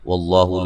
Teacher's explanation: لفظ اللہ کو موٹا ادا کریں گے، اس سے پہلے حرف پر زبر ہے